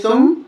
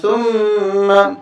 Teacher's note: میم مشدد ہمیشہ غنہ ہوتا ہے، اس لیے ہم یہاں غنہ کر رہے ہیں